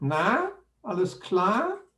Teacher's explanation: with the second tone on na and klar